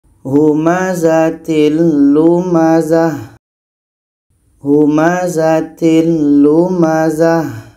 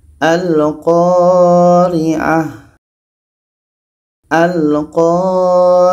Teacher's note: Za tetap dipendekkan. Tamarbutoh kita ubah menjadi huruf H yang berbaris mati. Sama dengan ini, tamarbutoh di akhir berubah menjadi huruf H yang berbaris mati.